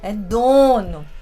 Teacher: Então, a gente tem essa pronúncia bem nasalizada.